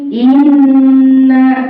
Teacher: suara ditekan ditahan dua harakat dan berdengung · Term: tasydid